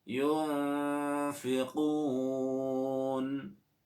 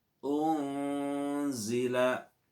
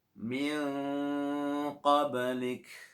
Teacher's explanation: Bacaan samar, yaitu antara jelas dan mendengung. Tidak terlalu mendengung, juga tidak terlalu jelas. Di tengah-tengah itulah disebut bacaan ikhfa.